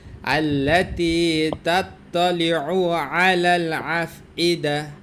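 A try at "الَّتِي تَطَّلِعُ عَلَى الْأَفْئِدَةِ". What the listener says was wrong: আলাল আফ, পরে ওটা হামজা, ওটা আবার আইন না, তাত্তালিউ আলা, ওই যে তাত্তালিউ শেষে আইন, আবার আলা, আলা এর শুরুতে আইন, পরে আফ ইদা ওখানে হামজা, আফ ইদা।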